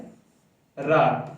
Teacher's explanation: वो कौन सा व्यंजन है, रा। तो जब आप रा का उच्चारण कीजिए, देखिए जीभ का जो अगला भाग है वो क्या करने लगेगा, कंपन करने लगेगा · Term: लुठित व्यंजन